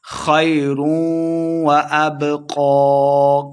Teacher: با حروف قلقلہ سے ہے، ساکن خوب واضح کر کے پڑھیں گے